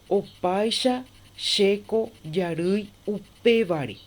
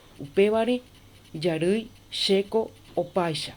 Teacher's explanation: lleva el acento en el vocal, en la penúltima, en el penúltimo acá. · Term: acento escrito